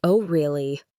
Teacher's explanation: with falling intonation and a slower pace and it sounds sarcastic or annoyed.